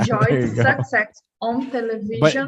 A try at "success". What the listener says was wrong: But remember, success, the stress syllable is the second one, not the first. So success.